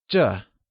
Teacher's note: This translates to 这 and is pronounced using the falling tone